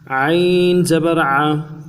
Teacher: یہ حمزہ کی شکل نہ بنے، عین زبر ا کبھی نہ بنے۔ عین زبر ع، میم زبر م، میم زبر م، نرمی کے ساتھ بغیر جھٹکے بغیر کھینچے ہوئے، میم زبر م، ملائیں گے دونوں کو، عم، عم۔